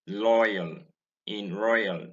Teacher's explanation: Many Nigerians pronounce this word as loyal, using O in place of OI. The sound here is OI and not O.